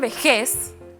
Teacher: Sonó fuerte en la última sílaba. Termina en Z, por eso no lleva tilde.